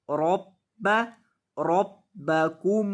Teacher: रब्ब बा मुशद्दद है, इसलिए बा को सख्ती के साथ पढ़ेंगे। रब्ब, रब्बकुमुल्लज़ी, और दाल को लंबा करेंगे।